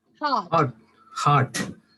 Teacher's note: If the R is followed by a consonant, you will not pronounce the R.